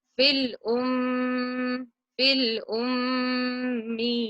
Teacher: I said the meem clearly from my mouth, and I nasalized the sound for 2 counts in my nose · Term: meem with a shadda